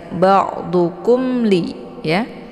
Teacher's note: Mim sukun bertemu dengan huruf lam itu dibaca, mimnya dibaca jelas karena ini merupakan hukum idhar syafawi. Jadi idhar syafawi ini dibaca jelas ya, bunyi mimnya cukup ditekan saja